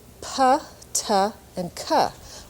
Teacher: we don't write the little H there but actually in English you have a puff of air